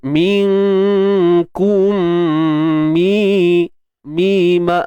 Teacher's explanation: Okey, idgham mithlain. Mim mati jumpa dengan mim kan, masukkan mim ke dalam mim yang kedua. Syarat dia huruf yang pertama tu mesti matilah dan yang kedua hidup.